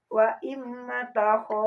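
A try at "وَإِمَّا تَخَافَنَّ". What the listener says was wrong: Banyak panjangin ada alif ya, matobi. Wa imma takho. Kho juga panjang matobi, mangga.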